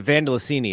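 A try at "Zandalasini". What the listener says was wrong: say her name with a Z, please. Zandelicini.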